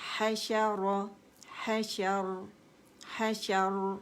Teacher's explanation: را ساکن کر دیں گے اور را مخفم ہوگی اور پیالہ بنے گی ہماری جو زبان ہے